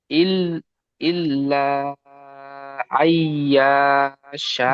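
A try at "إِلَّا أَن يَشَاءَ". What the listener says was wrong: ইয়া টান হবে না, ইয়ার উপরে কি আছে? এখানে ইল্লা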